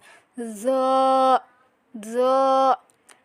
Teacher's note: জিহ্বার আগার উপরের সামনের 2 দাঁতের আগার সাথে লাগিয়ে মোটা করে পড়তে হবে